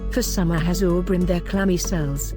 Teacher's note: The words are weighted by the emphasis of bilabial consonants, b, m, p